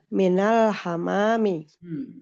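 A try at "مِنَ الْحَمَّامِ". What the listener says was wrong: Bukan hamam tapi? Hammami di atas tasdid. Minal hammami. Di atas tasdid. Minal hammami.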